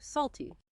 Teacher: Make sure that T sound is clear. It's not a flap T here.